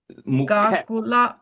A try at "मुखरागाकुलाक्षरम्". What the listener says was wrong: you're adding an extra a there mukharaga